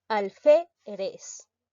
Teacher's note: La mayor fuerza de voz recae en la sílaba fe.